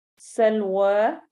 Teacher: سین میں سٹی والی آواز آئے گی